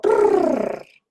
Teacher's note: articulated with the tip of the tongue touching or near the teeth ridge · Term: alveolar trill